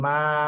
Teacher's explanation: মিম আলিফ জবর মা তিন আলিফ টান দিতে হবে